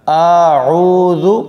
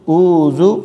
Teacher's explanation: اعوذ، عین کی جگہ الف نہیں پڑھنا، یعنی عین کی جگہ الف کی آواز نہیں آنی چاہیے